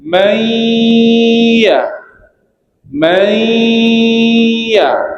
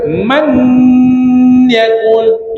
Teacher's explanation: Jadi bunyi nun mati ni dia dah masuk kepada ya. Itu maksud idgham.